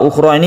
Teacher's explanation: jangan membuatnya terlalu panjang. Hanya ada satu Alif. Ukhra adalah Mad Thabi'i.